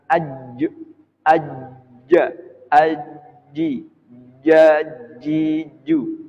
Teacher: Jadi ditekankan tengah-tengah lidah itu dengan langit-langit